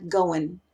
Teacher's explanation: Por ejemplo, el acento tejano o los acentos del sur de los Estados Unidos generalmente eliminan la G al final de palabras como running. Ese ing pasa de ser in.